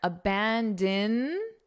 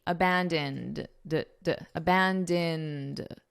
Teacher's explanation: Abandoned, because this ED is being pronounced as a very soft D